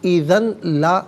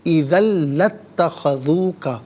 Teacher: اذن میں ذال پر 2 زبر کی تنوین ہے، اسے لتخذوک کے لام کے ساتھ ملائیں گے، اور لام کی آواز کو ادا کیا جائے گا ، یہاں پر یرملون کا جو قاعدہ ہے وہ اپلائی ہوگا،